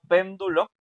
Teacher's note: Y esa precisamente pen, o sea, la antepenúltima es la que suena más fuerte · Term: esdrújula